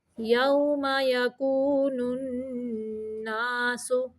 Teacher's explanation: یہاں پہ نون مشدد کا غنہ ہے۔